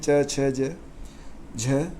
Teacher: च वर्ण के जो अक्षर होते हैं सब तालव्य होते हैं